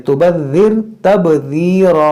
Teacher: ज़ाल को नरमी से अदा करें, तुबज़्ज़िर तबज़ीरा, रा को मोटा पढ़ें